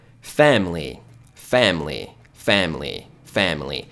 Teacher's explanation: simplesmente você ignora esse I. Fica fam, fechando a boca por causa do M.